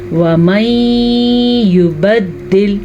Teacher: نون ساکن کے بعد یمون میں سے یا آیا ہوا ہے تو ہم ان دونوں کو آپس میں ملائیں گے غنے کے ساتھ